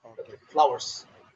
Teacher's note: so the U or W is pronounced but it's very short